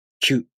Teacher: To pronounce Q, the tongue moves from the ki consonant to the u vowel